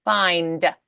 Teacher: make sure that's a dull D. We need that vibration in the throat.